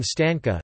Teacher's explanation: /n/ is velar [ŋ] before /k, ɡ/, as in stanka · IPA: [stâːŋka]